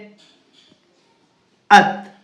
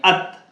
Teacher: زبان کی نوک اور اوپر کے سامنے دونوں دانتوں کی جڑ سے ادا ہوتا ہے. جیسے ات, یہ جو آپ کے سامنے کے دانت ہیں نا وہاں پہ آپ کو زبان لگانی ہے ات.